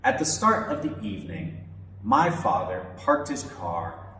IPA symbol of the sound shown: ɑː